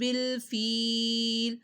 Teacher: یا ساکن سے پہلے زیر آ رہی ہے تو فیل لمبا کیا جائے گا